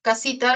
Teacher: representa la fricativa alveolar sorda S